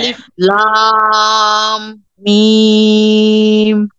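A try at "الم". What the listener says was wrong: আরেকটু লম্বা করবেন, এখন প্রথম দিকে আমরা প্র্যাকটিসের জন্য আরেকটু লম্বা করবো। হ্যাঁ, আরেকটু লম্বা করে করে পড়েন।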